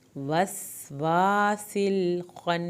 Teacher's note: وس وا سین کو سیٹی کے آواز کے ساتھ پڑھا، وا کے ساتھ ہم نے الف ادا کی، سل یہاں پر سین کو پھر سیٹی کے آواز کے ساتھ پڑھا لیکن یہاں پر لام نہیں ہلے۔